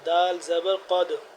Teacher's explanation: قاف دال زبر قد، قاف کو موٹا پڑھیں گے